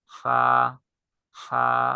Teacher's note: সামনের উপরের দুই দাঁতের আগা নিচের ঠোঁটের পেটের সঙ্গে লাগে।